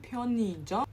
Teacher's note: so the '의 in the center, in the second placing is pronounced as '이.